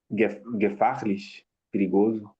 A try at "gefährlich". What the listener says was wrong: Ja, mit Umlaut, gefährlich.